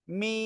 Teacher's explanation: মিম, 4 আলিফ টেনে পড়বো